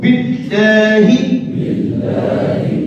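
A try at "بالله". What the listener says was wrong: बिल्लाहि मोटा करके ना पढ़ो ना भारी है,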